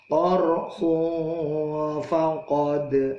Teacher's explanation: ada dal mati qalqalah dipantulkan